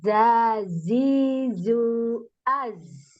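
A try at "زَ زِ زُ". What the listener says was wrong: Zu, jangan ju, zu.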